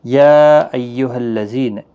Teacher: یا یہاں پر مد منفصل ہے، 3 الف کی مقدار کے برابر کھینچ کر پڑھیں گے۔